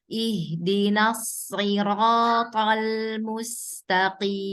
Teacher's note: Coba ditebalkan lagi di sod, ro, dan to ya Bu ya. Dibulatkan lagi suaranya.